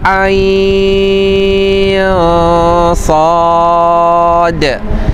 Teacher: Manakala ain sad kedua-duanya adalah mad lazim harfi, mukhaffaf dibaca dengan kadar enam harakat.